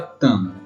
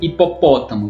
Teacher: a sílaba tônica é a antepenúltima sílaba, uma antes da última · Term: proparoxítonas